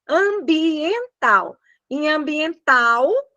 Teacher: Nós vamos ter lá no final o l que tem som de u